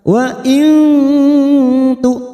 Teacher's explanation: ada Hamzah sukun di sini jangan samakan dengan Ain · nun sukun bertemu tak, ikhfa hakiki, kita samarkan bunyi nun sukun 3 harokat